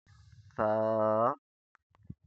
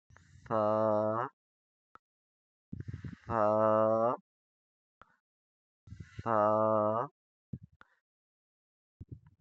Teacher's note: زبان کی نوک اوپر والے دانت کے کنارے کو نرمی سے ٹچ کرے گی سا کو پڑھتے وقت. زبان کی نوک اوپر والے دانت کے کنارے کو نرمی سے ٹچ کرے گی تو پڑھا جائے گا سا.